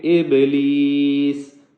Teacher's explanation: با ساکن ہے جس کی وجہ سے اس کے اوپر قلقلہ کریں گے